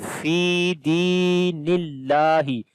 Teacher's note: اللہ کے نام سے پہلے زیر آ گئی ہے تو اللہ کا نام باریک پڑھیں گے، اسی وجہ سے یہ یہاں پر کالے رنگ کے اندر ہے، اور لمبا بھی کریں گے لام کو۔